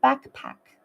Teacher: The K in backpack flows smoothly into the P in pack. There is no pause. And the K sound adjusts slightly to connect with the P sound.